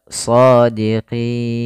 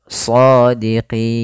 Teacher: Kemudian sebelum huruf nun ada huruf ya. Nah, maka pada lafal qi itu kita boleh memanjangkan 2 harokat atau 4 harokat atau 6 harokat. Shadiqin 2 harokat, shadiqin. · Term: mad arid disukun